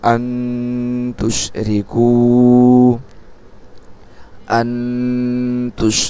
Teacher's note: এই যে নুন সাকিনকে আমরা কি করছি? গুন্না করতেছি। আর গুন্নাটা কোথায় করতেছি? নাকের মধ্যে। · নুন সাকিনকে গুন্নার সহিত গোপন করে পড়তে হবে